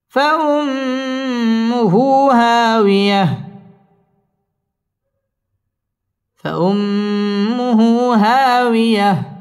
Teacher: হা মধ্য তাবাই একালিফ টেনে পড়তে হবে